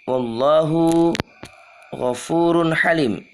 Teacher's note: Tanwin bertemu ha dibaca jelas.